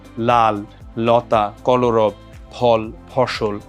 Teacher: জিওভার অগ্রভাগটা মুখের মাঝামাঝি দন্তমূলে ঠেকিয়ে রেখে জিওভার দুই পাশ দিয়ে বাতাসটা বের হয়ে যায় ল যখন আমরা উচ্চারণ করি তখন আমরা দেখতে পাই যে এইভাবে · দুই পাশ দিয়ে বায়ু নিশ্রিত হয় বলে এটাকে পার্শ্ববিক ধ্বনিও বলা হয়ে থাকে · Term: পার্শ্বিক ধ্বনিও